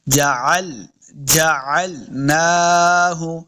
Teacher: عین کو الگ سے ایک مخرج ہے، حلق کے نچلے درمیان والے حصے سے عین کا مخرج ادا ہوتا ہے۔ جعلناہ، نون کے اوپر کھڑی زبر ہے، اس کو 2 حرکات لمبا کریں گے۔